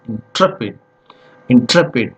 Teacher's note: So here the stress falls on the second syllable.